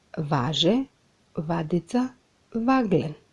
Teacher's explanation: Друга карактеристика фонетска е тоа што на почетокот на зборот се јавува протетичко односно вметнато В.